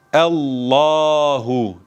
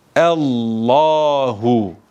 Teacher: Neden bunu kalın okudum Çünkü a verdim artı dil kökünü havaya kaldırdım